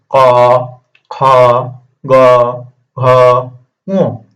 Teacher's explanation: এখন দেখো আমার কথা হচ্ছে এই যে ক, খ, গ, ঘ, ঙ এগুলো হচ্ছে কি আমার যে উচ্চারিত হচ্ছে, দেখো আমাদের যে গলা আছে না, গলার মধ্যে একটা উঁচু একটা কিছু আছে, এটাকে আদমস আপেল বলে, এখান থেকে উচ্চারিত হচ্ছে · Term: ক বর্গীয় বর্ণ